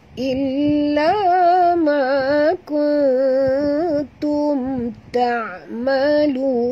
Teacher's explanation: mim mati bertemu ta juga izhar syafawi. Tak boleh dengung. Kemudian ta adalah huruf istifal sahabat.